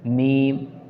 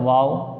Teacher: दोनों होंठ मिलकर मीम, और थोड़ा सा खुलेगा तो वाव अदा हो रहा है, कुछ खुला रहकर वाव अदा होता है।